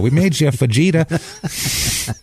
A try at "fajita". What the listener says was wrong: Stop pronouncing the J.